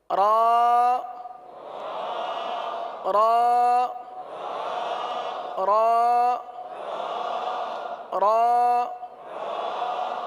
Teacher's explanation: را کا مخرج ہے زبان کا کنارہ اور دانتوں کی جڑ کے تالو کی جانب والے حصے سے ادا ہوتے ہیں